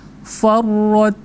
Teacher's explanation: perhatikan ra tafkhim ya, karena dia tandanya fathah ya